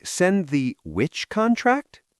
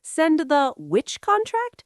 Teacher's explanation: Your voice goes up on the question word. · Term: rising intonation